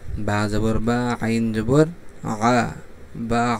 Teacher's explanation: আইন কোন জায়গা থেকে উচ্চারণ হবে বলেন তো গলার ভিতর থেকে কন্ঠনালীর মধ্যখান থেকে উচ্চারণ হবে